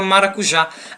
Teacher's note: A palavra maracujá, ela é uma palavra que tem, por sua sílaba em tonicidade, a sílaba já, que é a última sílaba. E também, essa sílaba já, ela é acentuada.